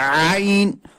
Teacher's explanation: عین کو وسط حلق یعنی حلق کے درمیانی حصے سے پڑھنا ہے. کچھ لوگ پڑھتے ہیں آئین، آئین نہیں ہے، یہ آئین ہے.